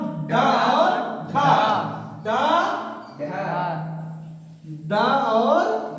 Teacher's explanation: वह व्यंजन जिनके उच्चारण में जीभ मूर्था को स्पर्श करती हुई त्वरित गति से नीचे गिरती है। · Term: उत्क्षिप्त व्यंजन